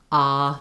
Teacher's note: Ah is called an open back vowel. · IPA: /ɑ/